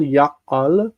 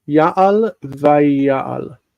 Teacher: It drops the A, and then the accent is on the full vowel, ya'al, and this cannot stand, so it goes to a full vowel to close the syllable.